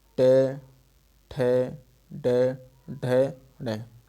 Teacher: टे वर्ग वाले मूर्धन्य से बोले जाएंगे। टोटल टे, ठे, डे, ढे, ढे, ये हमारे मूर्धन्य से बोले जाएंगे।